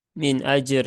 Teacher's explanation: dilihat harakat sebelumnya berharakat fathah maka dia berhubungan dengan fathah maka dibaca dengan tebal ya atau tafkhim